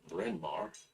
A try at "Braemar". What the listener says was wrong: Braemar. Ae, there's no N in it.